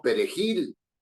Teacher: llevan el golpe de voz en la última sílaba, es decir, llevan la sílaba tónica en la última de las sílabas, ¿no?, se denominan palabras agudas.